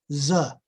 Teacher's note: a voiced alveolar fricative